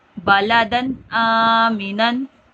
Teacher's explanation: تنوین کے بعد حمزہ آ گیا ہے، حمزہ حروف حلقی میں سے، یہاں گنہ نہیں کریں گے